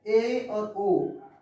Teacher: आपका मुख द्वार केवल आधा बंद रहेगा इसको बोलने में, ठीक है। इनको बोलेंगे तो आधा मुख द्वार क्या रहता है, बंद रहता है। · जिन स्वरों को उच्चारण करने में हमारा मुख द्वार आधा बंद रहता है उस स्वर को हम क्या कहते हैं, अर्ध समृद्ध स्वर कहते हैं।